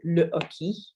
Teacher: There is an H which is called the aspirated H. You don't pronounce it, so it's not like in English.